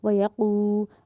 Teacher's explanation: اب وَيَقُو میں جو قوف ہے اس کو موٹا کرنا ہے، وَيَقُو نہیں کہنا، ڈنڈے والی کاف نہیں بنانا، قوف، ٹھیک ہے، قوف اور کاف اس میں ڈفرینس رکھنا ہے۔